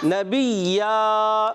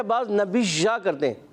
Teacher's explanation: یا مشدد کرنا ہے, یا کے اندر کوئی ایسی چیز پیدا نہیں کرنی کہ جس سے ایسا لگے کہ اس میں تفشی ہو رہی ہے